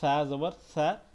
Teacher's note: এই সাটা একটু নরম করে পড়তে হবে, জিব্বার আগা থেকে উচ্চারণ হবে